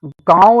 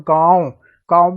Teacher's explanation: गांव में क्या हो रहा है नाक और मुंह से हमारा उच्चारण हो रहा है